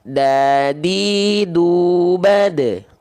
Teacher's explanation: ujung lidah kita disentuhkan ke Pangkal gigi jadi gigi kita punya bagian pangkalnya pangkal tempat tumbuhnya gigi · ujung lidah menyentuh dengan pangkal gigi sari atas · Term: huruf Dal, huruf dal